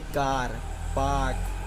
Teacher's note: कार में एक नई चीज़ जानने जैसी है कि R जो है वो साइलेंट है